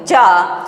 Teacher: जीभ हमारी एकदम चपक के तालों के पास जा रही है